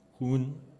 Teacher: Chechen is hun with a pharyngeal H.